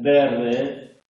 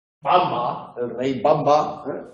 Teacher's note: El fonema consonántico bilabial sonoro